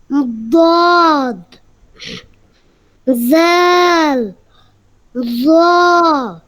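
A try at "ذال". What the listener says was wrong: হ্যাঁ, দুইটা দুইটা এরকম, এই জাল জ এরকম হবে না, জিব্বার আগা চেনো তুমি? সামনের দিক যেখান থেকে আমরা একদম জিব্বা দেখে কি করি, খাই দাই যেখানে, এখানটা উপরের দুই দাঁত, উপরের দুইটা দাঁতে লাগাইয়া নরম আওয়াজে, কোনো শব্দ আসবে না, ঠিক আছে, কোনো শব্দ আসবে না। দাল, ল।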